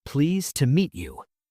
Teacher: Native speakers almost never say it like that. Instead, the word to reduces. It becomes a soft, quick sound, a schwa.